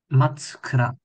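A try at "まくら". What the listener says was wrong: Ma. So this two right here is actually a small two. Hard to tell. So makura is how this is pronounced.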